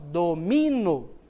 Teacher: No caso, domino, a sílaba tônica está no mi, é a sílaba mais forte. Domino, certo?